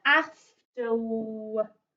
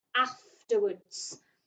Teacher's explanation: it looks like it's got an R sound in there, but we wouldn't say it as an R sound because the word is afterwards.